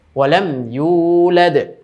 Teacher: এই যে ইউলাদ, এখানেও কিন্তু অনেকে টান দিতে ভুল করে। তো ইউ পেশের বাম পাশে জজমালা ওয়াও থাকার কারণে এক আলিফ টান হচ্ছে।